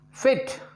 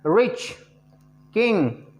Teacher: Height of the tongue कितना रहेगा, half close, यानी कि ना तो पूरा खुलेगा ना पूरा बंद रहेगा, हाफ क्लोज होगा. और कौन सा पार्ट ज़्यादा उठता है, ये फ्रंट का पीछे वाला हिस्सा.